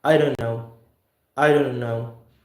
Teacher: We don't release the T here. What we do here is basically we held the T.